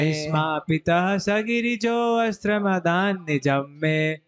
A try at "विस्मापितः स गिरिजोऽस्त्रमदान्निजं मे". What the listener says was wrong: आ नहीं बोलना है। आप बोलेंगे तो देखिए वो सेट नहीं होएगा, जहां पे एस आ जाए तो आ खा जाएगा। ठीक है, विस्मापितः स गिरिजोस्त्रमदान्निजं मे,